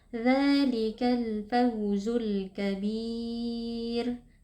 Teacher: ra-nya harus tipis karena ra-nya waqaf, kemudian sebelumnya itu adalah ya sukun dan sebelumnya kasroh, sehingga hukumnya itu adalah tarqiq atau tipis.